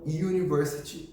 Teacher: A palavra university pode começar com um U, mas o fonema neste caso é um J.